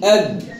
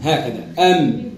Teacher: أنه الباء فيه كز والميم ما فيهش كز